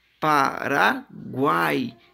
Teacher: três vogais juntas na mesma sílaba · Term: tritongo